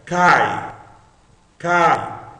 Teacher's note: É um ditongo, é uma sílaba só, é uma sílaba longa.